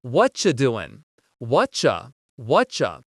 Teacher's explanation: It sounds like a CH sound here. Actually, we've cut out completely the word are, and the word you just becomes cha